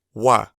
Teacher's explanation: the u fades in to the a it's an ascending diphthong